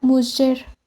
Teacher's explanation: la fricativa postalveolar sonora, representada con la letra G ante vocales como la E o la I, y pronunciada como sh